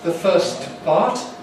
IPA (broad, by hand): ðə ˈfɜːst ˈpɑːt